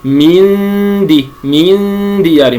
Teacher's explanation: إنما أرقق الغنة لأن حرف الدال من أحرف الترقيق